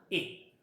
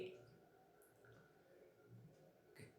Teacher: It is produce between half open and half close position. म्हणजे याचा अर्थ असा आहे, या साऊंडचा उच्चार करत असताना आपल्या जिभेची उंची हाफ ओपन आणि हाफ क्लोज दोन्हीच्या मध्ये असते, त्यामुळे याला असं म्हणायचं.